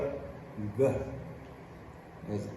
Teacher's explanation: the sound is really made kind of with the back of the tongue and the soft palate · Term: the g sound